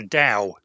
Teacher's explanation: TAO is a Chinese word, and it's pronounced Dao. It's supposed to be an unaspirated T, so it sounds like a D.